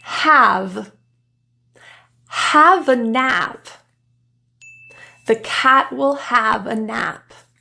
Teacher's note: the tongue is very low and forward · the a has a slightly more tense smile